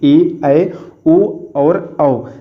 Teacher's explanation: ये जो आपके होते हैं चार शब्द ये आपके संयुक्त स्वर वर्ण होते हैं क्योंकि ये दो स्वर वर्णों से मिलकर के बने होते हैं।